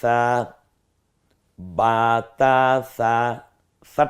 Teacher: নরম আওয়াজে জিহ্বার আগা সামনের দাঁতের লাগার সাথে মিলালেই নরম হয়ে যাবে